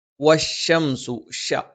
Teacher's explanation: നാവിന്റെ മധ്യഭാഗം മേലെ അണ്ണാക്കിൽ എന്ന് നമ്മൾ പറയുമ്പോൾ നാവിന്റെ രണ്ട് ഭാഗം, നാവിന്റെ മധ്യത്തിന്റെ രണ്ട് ഭാഗങ്ങൾ മേലെ അണ്ണാക്കിൽ സ്പർശിക്കുകയും നാവിന്റെ ആ ഒരു മധ്യഭാഗം ഒന്ന് കൊഴിഞ്ഞു കിടക്കുകയും അതിലൂടെ കാറ്റ് സഞ്ചരിക്കുകയും ചെയ്യുന്ന ഒരു രീതിയാണ് ഷ